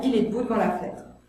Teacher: dans « Il est debout devant la fenêtre », là je fais tomber tous les E muets